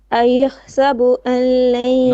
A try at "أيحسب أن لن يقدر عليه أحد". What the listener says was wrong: you're making you're pronouncing the an with a bit of ghunna. There's no noon here. There's no ghunna. Allain. Pretend this noon doesn't exist.